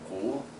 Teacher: It's almost like a Mandarin third tone, except for that it rises a little bit higher in normal speak. So that'd be the main difference. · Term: fifth tone